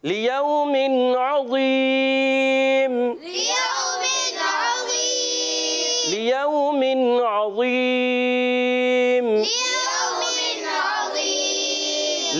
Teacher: ألا يظن أولئك أنهم مبعوثون گڈ، لیوم عظیم، ليوم عظيم لیوم عظیم، ليوم عظيم لیوم، لام کے نیچے زیر ہے، لام کو کھینچنا نہیں ہے، اور لیو، واو ساکن سے پہلے زبر ہے، واو لین ہے، نرمی سے ادا کریں گے